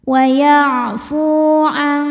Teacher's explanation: Kemudian fu dihukumi dengan mad tabi'i dhahiri. Sebab waw sukun ini didahului harokat dhammah, maka huruf fa kita panjangkan hanya 2 harokat